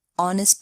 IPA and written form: ˈɒnɪst (honest)